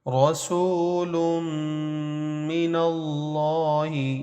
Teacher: رسول لام کی دو پیش کو میم سے ملائیں گے